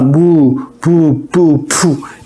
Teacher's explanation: 순음, 입술 소리. 순음, 양순음이라고도 합니다. 양쪽 입술이 부딪혀서 난다.